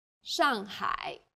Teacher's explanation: the first syllable here is made of an initial and a final and a fourth falling tone